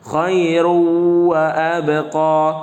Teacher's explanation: jangan dibaca khairun wa abqa, tapi tanwinnya dimasukkan ke huruf setelahnya